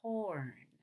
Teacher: on corn, I divided corn into two syllables, so I could go up on co and down on earn.